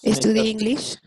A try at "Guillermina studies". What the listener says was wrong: Guillermina studies. Procura sí pronunciar esa S para que se entienda que Guillermina studies. O sea, como es tercera persona, es un she, Guillermina, necesitas ponerle la S al final del verbo, Guillermina studies, que como decíamos, es una palabra que termina en Y precedida de una consonante, una D.